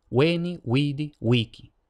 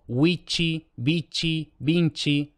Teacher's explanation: primera la v siempre se lee como W weni wied wiki no se lee como B no se lee como v labiodental